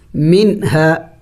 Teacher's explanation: ہے تو یہاں پہ اخفا نہیں کیا جائے گا۔ منہا یعنی نون کو ظاہر کر کے پڑھیں گے، نون کو ناک میں نہیں چھپائیں گے